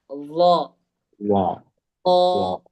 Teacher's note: നാവിന്റെ അറ്റം മേൽ മുൻപല്ലിന്റെ അരികിൽ തട്ടണം